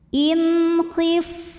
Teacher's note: Sebab ada nun sukun yang menghadapi huruf halqi atau huruf tenggorokan, yaitu huruf kha. Maka nun sukun kita bunyikan dengan jelas. Bunyi n-nya jelas, tidak perlu ditahan. In khif, ini fa-nya keluarin angin ya karena ada sifat hamsnya. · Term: izhar halqi